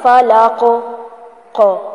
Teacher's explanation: فلاق last میں جو قاف آ رہا ہے اس کو بھی ہلائیں گے، فلاق ایسے نہیں پڑھنا، فلاق قو. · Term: کلکلا